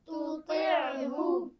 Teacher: تا جو ہے شروع میں وہ باریک ہے اور طا زیر کے ساتھ موٹی ہے